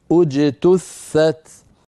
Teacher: بدانا بهمزه مضمومه لان التاء مضمومه